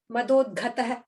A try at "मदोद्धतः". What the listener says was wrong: the not gha. Madod, not gha, dha. The first madod is the first dha. Next is the dha, second dha. So madodhatah.